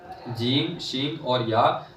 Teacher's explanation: जीम शीन और या जबान के दरमियान और ताल के दरमियान से अदा होते हैं